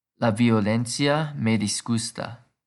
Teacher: IA is a diphthong and thus treated like one syllable. The only time the emphasis will be on the I is when it has a tilde.